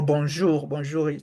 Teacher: the N is not really to be pronounced